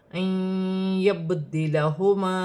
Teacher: با ساکن ہے، حروف قلقلہ میں سے ہے، قلقلہ کے ساتھ ادا کیا جائے گا